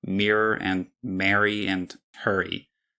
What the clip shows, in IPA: miɹor and mɛɹy and həɹy